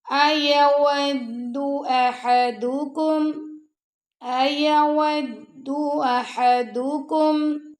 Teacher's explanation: حمزہ اور ہا کو بھی لمبا نہیں کرنا اور دال کو بھی لمبا نہیں کرنا